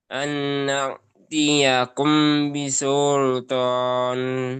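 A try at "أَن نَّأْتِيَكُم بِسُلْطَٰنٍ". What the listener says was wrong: Masih terlalu cepat, 3 ketukan lambat. Hamzahnya hati-hati jangan sampai tertukar dengan ain.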